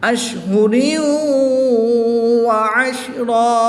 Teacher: دو زبر کی تنوین کو وقف میں الف مدہ سے تبدیل کر دیں گے